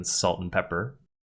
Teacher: And becomes n as in “salt n’ pepper” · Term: weak form